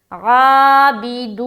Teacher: عین بالکل اچھے سے نکالے حلق سے، عابدون، بازر بھی ڈالوا پیش، دو واو مدہ کریں گے، نون کے اوپر وقف کریں گے۔